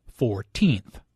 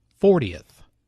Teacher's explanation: The stress is on the second syllable [fourTEENTH]. Compare this with “fortieth: 40th” [FORtieth].